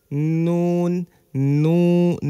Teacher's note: জিহবার আগা তার বরাবর উপরে তালুর সঙ্গে লাগিয়ে উচ্চারিত হয় নুন